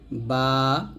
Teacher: দুই ঠোঁটের ভিজা জায়গা মিলিয়ে উচ্চারণ করতে হয়